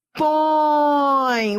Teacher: Vai da vogal, que é o som forte, para o som fraco da semivogal. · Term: Ditongo decrescente